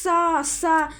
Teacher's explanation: जैसे एक वायु निकलती, जैसे सा, जैसे बोलते ही पता चलता है एक वायु निकलती है, जो संघर्ष होता है बोलते समय